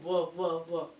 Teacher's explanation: ओठ और दांत दोनों का प्रयोग होता है, इसलिए जो है उसका उच्चारण स्थान दंतोष्ठ है और इस ध्वनि का नाम क्या हो गया, दंतोष्ठ हो गया।